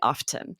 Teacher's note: in certain parts of the UK, you'll always hear the T,